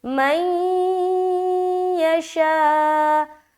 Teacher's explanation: नून साकिन के बाद या है, तो यहाँ पर हम इदगाम कर रहे हैं, इदगाम नाक़िस, गुन्ने के साथ इदगाम करना है।